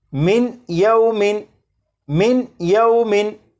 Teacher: जब नून साकिन के बाद या हरूफ यरमलून में से है तो नून साकिन को या में इदगाम करके पढ़ेंगे, मिलाकर पढ़ेंगे।